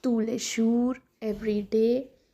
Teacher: The first one is when toss is followed by a noun that is when something comes after this word to the final s is silent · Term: silent s